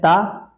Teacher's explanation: ता अल्प प्राण दंत सही है